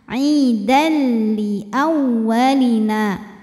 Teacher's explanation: Maka cara bacanya tanwin ini dileburkan atau dimasukkan ke lam, tidak disertai dengungan. Artinya ini bacanya bukan aidan tapi aidal dan cukup ditekan. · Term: idgham bila gunnah